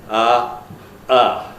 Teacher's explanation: one glottal stop, which is not a phoneme but a very important allophone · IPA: [ɑʔɑ]